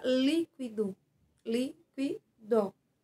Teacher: a sílaba mais forte e a sílaba tônica é o li